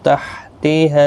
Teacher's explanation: ہا الف مدہ ہے، ایک الف کی مقدار کے برابر کھینچیں گے۔